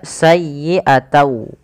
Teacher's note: karena dia bertemu dengan waw, huruf n-nya itu diganti dengan waw. Maka sayyi'atau. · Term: idgham